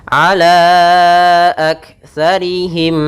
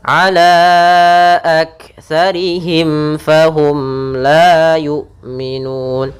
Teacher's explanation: Kedua-duanya kita namakan dengan izhar syafawi, yaitu suara mimnya harus jelas, jangan ditahan gunnahnya.